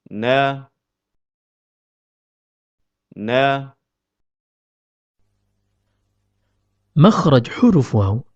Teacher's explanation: huruf nun keluar dari pertemuan antara ujung lidah dengan gusi bagian atas